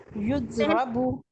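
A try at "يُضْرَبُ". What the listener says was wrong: हाँ जी, युद्रबू। युद्रा रा, ठीक है, इसके ऊपर जबर पड़नी है।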